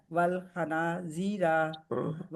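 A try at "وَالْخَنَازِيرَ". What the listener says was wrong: रा को नहीं खींचना ना, हाँ, जी को खींचना है और ना को खींचना।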